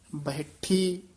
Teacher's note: ਕੇ ਬੋਲਣਾ ਬਹਿਠੀ ਜਿਹੜਾ ਇਹ ਵੀ ਕਸ ਕੇ ਹੀ ਉਚਾਰਨ ਕਰਨਾ ਬੈਠੀ ਨਹੀਂ ਕਹਿਣਾ ਹਹ ਦੀ ਸਿਹਾਰੀ ਲਾ ਕੇ ਕਸ ਕੇ ਬੋਲਣਾ